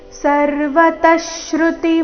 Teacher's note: ವಿಸರ್ಗದ ಅರ್ಧಶ ಮುಂದಿನ ಶಬ್ದದ ಶ್ರುತಿ ಒಟ್ಟಿಗೆ